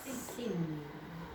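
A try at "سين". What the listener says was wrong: Bukan sa. Bukan ya. Sinun panjang ya. Sinun. Makhrajnya mana?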